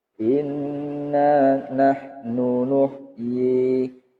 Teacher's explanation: Qaidahnya gunnah, setiap nun dan mim yang bertasdid. Dengungnya bacaan gunnah, panjangnya bacaan mad tabi'i.